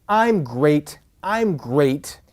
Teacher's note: it starts pretty high and then goes down i'm great very conclusive and very assertive i'm great okay i'm